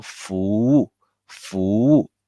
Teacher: The W is the same as the U. Therefore, the FUWU together, it sounds like FUUU together.